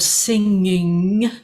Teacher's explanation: if we say the word singing, then we're going to be twice down the nose.